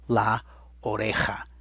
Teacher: it also had the rough H sound, which is really a J, buried right in the last syllable there